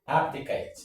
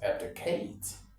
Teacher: the stress is on the first syllable actually